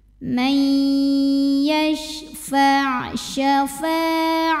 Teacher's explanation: Huruf shin punya ciri khas sifat yang tidak dimiliki huruf lain, namanya tafashi. Ada sebaran angin di dalam mulut kita.